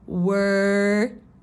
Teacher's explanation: And remember, it's a stop consonant on the D, so I don't say it, but I start to form it, and then I catch it on the roof.